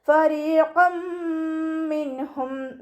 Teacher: നൂൻ സാക്കിനയ്ക്ക് ശേഷം ഇൽഹാറിൻ്റെ ലെറ്ററായിട്ടുള്ള ഹ വന്നിട്ടുണ്ട്. നൂൻ സാക്കിനയെ വ്യക്തമാക്കി മണിക്കാതെ ഓതിക്കൊടുക്കുക